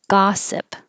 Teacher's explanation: the vowel is ah looks like an o but sounds like ah